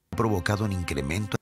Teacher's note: La U de un fue omitida por completo y la N de un se unió a incremento. Por eso parece que está diciendo Cadonin.